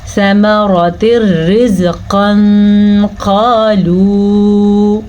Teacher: ثمرات رزقا قالوا، یہاں پہ اخفا کا قاعدہ ہوا ہے، قاف موٹی ہے تو موٹی ہی پڑھنی ہے، پر کر کے پڑھنی ہے